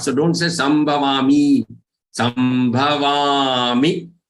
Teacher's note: Va is long and mi is short.